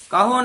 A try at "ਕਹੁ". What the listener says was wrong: ਕਹੋ ਹੂੜਾ ਨਹੀਂ, ਥੋੜਾ ਜਿਹਾ ਹੀ ਫਰਕ ਹੁੰਦਾ, ਜਿਵੇਂ ਹੂੜਾ ਹੋਵੇ ਕਹੋ, ਲਾਹੋ, ਸਾਹੋ, ਬਾਹੋ। ਔਂਕੜ ਹੋਵੇ ਕਹੋ, ਲਾਹੋ, ਬਾਹੋ, ਸਾਹੋ। ਇਹਨਾਂ ਉਚਾਰਨ ਕਰਨਾ।